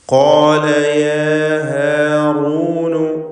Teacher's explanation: ഖാഫിനും അലിഫിനും തഫ്ഖീം കൊടുത്ത് തടിപ്പിച്ച് ഉച്ചരിക്കുക